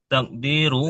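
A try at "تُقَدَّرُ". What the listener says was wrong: Kok takdir? Kalau takdir setelah dal ada ya sukun. Tuqaddaru.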